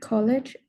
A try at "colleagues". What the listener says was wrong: So first one, this word here is pronounced colleagues. Colleagues. Yeah, colleagues. Yeah, this is just pronounced just with the E sound, colleagues, and a hard G, of course, a hard G, not a soft G. So colleagues.